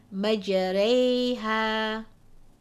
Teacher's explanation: diamond shape sometimes it's a small dot but this indicates that the alif or the fata must be pronounced with a slant towards a Kasra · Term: imala